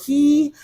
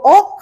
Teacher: 기 하면 혀가 앞으로 기 하고 가죠. 그리고 억 하면서 혀가 안으로 들어오고 내려온단 말이야. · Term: 혀의 움직임